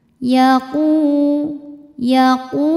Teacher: Huruf qf tebal tidak ada anginnya kemudian pangkal lidah naik u tidak terlalu nyeklok u enggak ya u terus karena damah